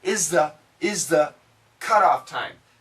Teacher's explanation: the Z sound, Z, can actually cancel the TH.